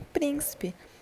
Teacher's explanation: nós temos a antepenúltima sílaba como sendo sílaba tônica em príncipe